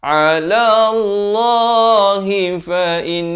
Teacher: dengungkan in 2 harakat di situ, wajibul gunnah